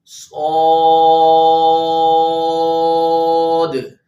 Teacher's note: اس کو موٹا بھی پڑھنا ہے اور سیٹی بھی نکالنی ہے. صاد لمبا 3 الف کے برابر کم سے کم کرنا ہے آپ نے، اور اس کو ادا کرتے ہوئے واو نہیں پیدا کرنی، یعنی سواد نہیں پڑھنا.